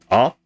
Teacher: ah is a vowel that is made with the tongue very low in the mouth